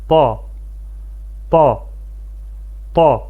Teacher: Bu hərfin məxrəci, yəni çıxış yeri bundan öncə keçdiyimiz tə və dəl hərflərinin məxrəcinə çox yaxındır. Belə ki, bu hərf dilin ucunu yuxarı kəsici dişlərin və ya üst ön dişlərin kökünə şiddətli bir şəkildə toxundurmaqla tələffüz edilir. Azərbaycan dilində olan t və d səslərinin qarışığı və qalın formasıdır. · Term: ta hərfi